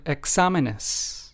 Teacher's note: we have the accent on the second syllable, despite this word exámenes having four syllables